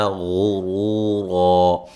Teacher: غین کو موٹا ادا کریں گے ، را کو موٹا ادا کریں گے، وہ مدہ ہے، اس